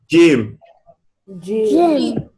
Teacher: You would notice the middle of the tongue is touching the upper palate.